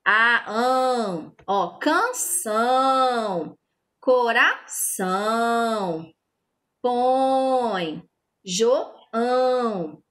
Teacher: É um som que sai do nosso nariz e da boca. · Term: som nasal